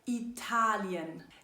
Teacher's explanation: Denn hier ist die Betonung auf die zweite Silbe